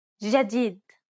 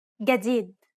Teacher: In Egyptian Arabic, this letter is pronounced like a regular English G, as in game.